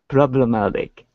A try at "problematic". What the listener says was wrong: Great. Much better.